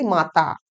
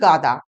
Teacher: এই মহাপ্রাণ বর্ণ উচ্চারণ করার পরিবর্তে আমরা অল্প প্রাণ বর্ণ উচ্চারণ করি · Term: অল্প প্রাণী ভবন